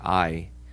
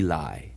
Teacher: if you listen very carefully in I, you can hear that the A merges with the E, I. So we lie. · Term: diphthong